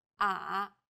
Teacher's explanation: The third tone goes down from a low pitch, then rises to the middle of the pitch range.